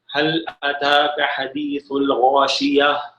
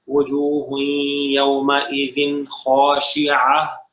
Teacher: وقف کی صورت میں ہا کی آواز آتی ہے، اگر وقف نہ کریں، ملا کے پڑھیں تو پھر تا کی آواز ہی رہے گی. تا کی آواز ہی رہے گی، پھر ہا کی آواز نہیں آئے گی.